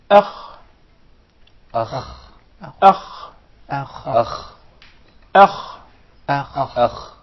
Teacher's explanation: The Kha is a letter which is described as letter of tafkhim, a very heavy letter by nature. Okay. Sometimes when we come to pronounce the Hamza which precedes the Kha, we tend to make it heavy as well.